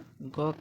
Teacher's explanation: ग का उच्चारण स्थान कंठ होता है।